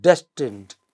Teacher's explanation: In the word destined, des is the stressed syllable, not tend. Okay?